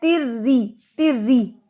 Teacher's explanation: اس کے نیچے کسرہ ہے, یہ باریک ہے, اس کو تیر نہیں پڑھنا, زبان نہیں اٹھانی تیر نو, اس کو پڑھنا ہے تر ری تر ری, ری کی آواز آنی چاہیے.